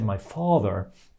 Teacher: when I say my father the far is stressed and it's very long